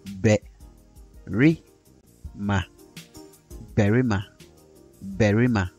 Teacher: The vowel A may be realized as the regular A sound that you find in the English word black. The vowel A may also be realized as E, as in the E sound you find in the English word animal. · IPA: /bærima/